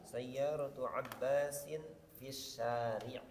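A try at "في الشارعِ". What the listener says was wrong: Fis syari'i ikrah harakatal akhir ya.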